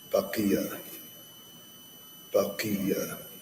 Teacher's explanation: So it's a little bit more of a difficult letter to pronounce in the sense that yes, it's a heavy letter. When it takes the kasra, it now takes the lightest amount of heaviness